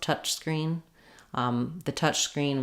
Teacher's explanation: The ch sound at the end of touch has some noise like a s would